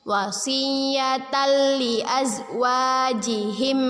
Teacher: Kita baca dengan memasukkan bacaan tanwin kepada huruf lam bila gunnah dengan tidak berdengung. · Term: idgham bila gunnah